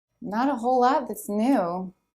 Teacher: And then we have a stop T at the end of lot because the next sound is a consonant, the TH sound.